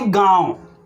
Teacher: इसका उच्चारण होता है नाक से हो रहा है और मुंह दोनों से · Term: अनुनासिक